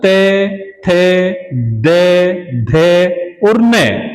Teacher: इनको बोलते हैं तो हमारी जीवा जो है हमारे दांतों को स्पर्श करती है, इसलिए इनका उच्चारण स्थान हमारे दांत हैं।